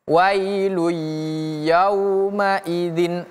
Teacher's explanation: Jadi seolah-olah ada tasydid namanya idgham. Idgham ingat artinya melebur.